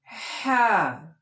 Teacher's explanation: হয় চন্দ্রমন্দ্র আকার হ্যাঁ। হ্যাঁ উচ্চারণ হবে, জিহ্বাটা হলকের শেষ হতে এরকম আওয়াজ আসে, হ্যাঁ। একটু গলা চিপিয়ে বলবেন, হ্যাঁ।